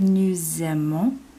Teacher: Taking off the ER, we have ONS this time. And note, we do hear that liaison, that S that sounds like a Z